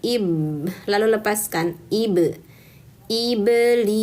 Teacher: Ba keluar dari merapatkan kedua bibir. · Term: qalqalah